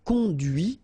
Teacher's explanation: final T is not pronounced